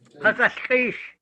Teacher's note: It almost sounds like an SH sound at the very end.